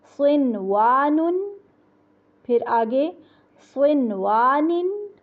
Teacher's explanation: واو کو ہونٹ گول کر کے پڑھنا ہے، دانت رکھ کے نہیں پڑھنا